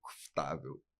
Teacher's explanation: Porque em Portugal, eles comem as vogais, né?